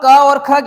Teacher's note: क और ख की ध्वनि निकलती है हमारी गले से कंठ से